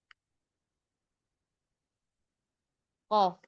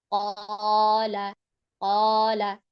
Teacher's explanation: Makhrajnya keluar dari pangkal lidah bertemu dengan langit atas lunak. Nah, makhraj qa saat dia mengucap qa ini makhrajnya keluar dari pangkal lidah dan langit-langit atas. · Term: makhraj qaf